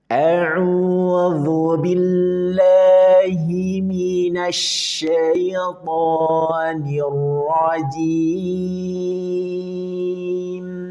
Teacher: Kita mulai dari taawud nada satu naik.